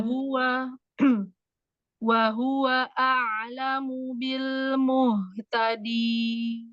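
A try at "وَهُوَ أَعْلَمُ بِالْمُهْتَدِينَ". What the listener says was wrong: Jangan ketebalan. Muhta. Haknya tipis kan? Muhta.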